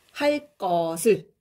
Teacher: 잘 보면은 기억인데 쌍기역으로 된소리, 경음화 현상이 일어난 게 보이죠?